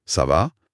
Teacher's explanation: Une intonation qui descend, down, ça en fait une affirmation, une réponse.